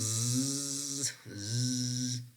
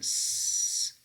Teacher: When you are pronouncing that prolonged z, you feel a very strong vibration in your throat, or technically in your vocal folds, right?